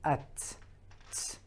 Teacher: the tip of the tongue is actually touching the upper end of the inner side of the incisors. So if you just use, if you say at, t, if you just keep on saying this sound, ta, you can already understand what's going on.